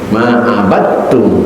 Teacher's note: Dalnya diidghamkan ke dalam huruf ta, kena dal sama ta itu satu makhraj, saudara dekat, maka diidghamkan.